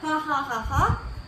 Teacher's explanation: If air is passed through the glottis when it is nerved as in figure 13b, the result is a fricative sound for which the symbol is H. This sound is not very different from a whisper vowel. It is called a voiceless glottal fricative.